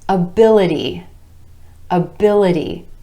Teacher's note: Our stress shifts to that I vowel sound in the syllable right before the suffix